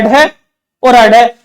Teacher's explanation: इनके उच्चारण के अंदर जीभ है वो नीचे झड़काई जाती है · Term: ताड़नजात